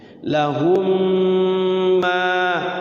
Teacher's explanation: Mim mati ketemu mim digunahkan. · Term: idgham mimi